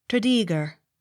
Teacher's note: Accent on second syllable.